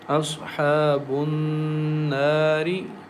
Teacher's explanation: Noon has shadda on it. So we recite with nasal sound and stretch the sound for two counts